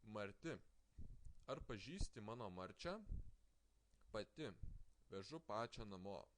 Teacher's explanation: T changes to ch because the ending is soft, pronounced as a. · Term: sound alternation